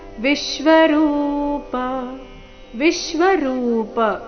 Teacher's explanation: ವಿಶ್ವರೂಪ ಶಬ್ದದಲ್ಲಿ ವಿ ಮೇಲೆ ಆಘಾತ